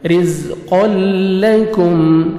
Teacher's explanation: گے، رزقل، قاف کو موٹا کر کے پڑھیں گے، رزقل لکم، کاف کو یہاں پہ باریک پڑھنا ہے، یہ قاف موٹا پڑھیں گے